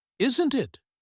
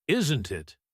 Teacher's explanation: When the voice goes up on the tag question, "Isn't it?" with a rising tone, the speaker is genuinely asking.